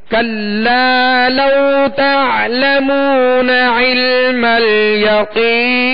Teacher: اور عین کی ادائیگی وسط حلق سے کریں گے